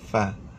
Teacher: Gigi atas sentuh bibir bawah. Fa. Bibir mana?